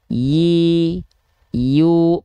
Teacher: huruf ya itu Tengah lidahnya naik